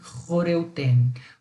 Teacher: eu pronuncio como uma velar, tá? Como diz, uma fricativa velar, ou seja, é aquele som escarrado, tá? É o som do CH do alemão, do J do espanhol, do R carioca, né?